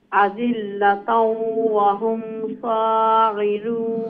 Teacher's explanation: ولنخزئنهم منها أذلة وهم صاغرون ولنخرجنهم منها أذلة وهم صاغرون আদিল্লাতাও ওয়াও লগে গিয়া connect হইব ইদগাম হইব গুন্না হইব